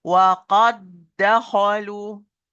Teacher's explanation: No qalqala, because the first dal is fully merged into the second. And as I explained before, when the first letter is a muqalqal and it's fully merged into the second, which is muqalqal, same like here, no qalqala will be applied.